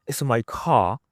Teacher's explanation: in British English, most of the time they basically keep the R silent.